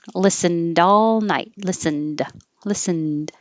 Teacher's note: i'm not going to release the d unless there's a vowel after it